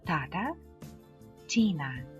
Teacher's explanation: приголосне Т вимовляється з Так званим придихом це особливо мітна перед наголошеними голосними